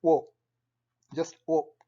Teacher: somewhat similar to our O, but with less emphasis, which is like a shorter vowel